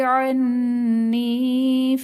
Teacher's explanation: عنی میں نون مشدد ہے، یہاں پر غنہ کر کے پڑھیں گے۔ غنہ کا مطلب ہے آواز کو ناک میں لے کر جانا۔ یا ساکن سے پہلے نون کے نیچے زیر، یا مدہ کا قاعدہ ہوگا۔